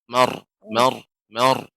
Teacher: ya bagus ya sedikit saja tadi untuk ro ya terus berlatih untuk ro ya ro tebal marhamah tetap harus ada getaran di dalam mar mar mar ya tidak mar adapun mar maka lidah tidak bergetar ya jadi tetap harus ada Mar, mar mar, mar mar mar, mar, mar.